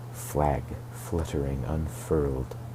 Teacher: he repeats voiceless fricatives at the start of the two stanzas, flag fluttering, unfurled to create a free, flowing, and airy effect of freedom.